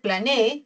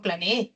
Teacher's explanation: Entonces, plane E se separa en tres sílabas por hiato simple. Y el acento está en la última sílaba